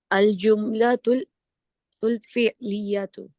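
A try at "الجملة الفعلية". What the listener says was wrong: माशाल्लाह।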